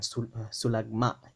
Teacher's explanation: there's that glottal stop at the end